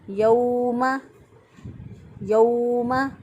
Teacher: لمبا نہیں کریں گے، نرمی سے، آسانی سے اور جلدی سے ادا کریں گے، کیونکہ واو لین ہے